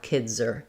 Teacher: it's natural and easy to put the Z on the R, kids are. But if I had to say, for example, the kids went there, I still need to be able to say that voiced Z sound, even though my next sound is a consonant, as in went.